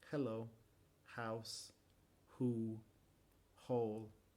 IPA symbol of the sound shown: h